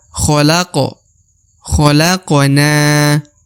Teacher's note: Huruf Q dibaca qalqalah atau pantul karena berharokat sukun